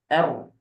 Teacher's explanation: enggak kedengaran harus tetap getarnya ada karena dia sifatnya takrir